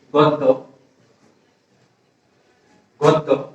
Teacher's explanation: জফলার আগে অ উ হয়েছে, গ থেকে গু, দ ব্যঞ্জন দীর্ঘ হয়েছে